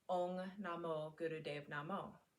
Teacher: Well, slight adjustments are being made in the mouth. When we say Ong, we say O in the back of the throat, and the Ung comes back into the nasal cavity. The G is very silent, so you'll just press the G lightly on the top of your mouth.